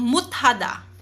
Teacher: si shiyat ang nauna, sinundan siya ng hiyat, naging T sound naman po si shiyat